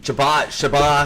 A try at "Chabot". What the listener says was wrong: Steven, you say it's Chabot. The T is silent.